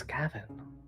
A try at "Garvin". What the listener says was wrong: Garvin. There's an R. Garvin.